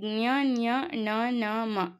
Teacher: ಮೂಗಿನ ಸಹಾಯದಿಂದ ಉಚ್ಚಾರ ಮಾಡುವಂತಹ ಅಕ್ಷರಗಳನ್ನ ನಾಸಿಕ ವರ್ಣಗಳು ಅಥವಾ ಅನುನಾಸಿಕಗಳು ಅಂತ ಹೇಳ್ತಿವಿ ಇಲ್ನೋಡಿ ಜ್ಞ ನ್ಯ ಣ ನ ಮ ವರ್ಣಗಳು